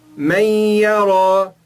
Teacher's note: Toda vez que tiver o nun sem vogal e mais uma dessas palavras, ya, ra, mim, lam, waw e nun, nós não pronunciamos o nun e pronunciamos uma das letras que vem depois dela